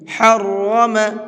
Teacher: را کے اوپر زبر ہے تو اس کو پر کر کے پڑھیں گے